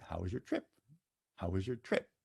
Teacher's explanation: the voice, how was your, accent goes up, but then falls during the duration of the word trip